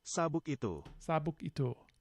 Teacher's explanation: I hear a velar stop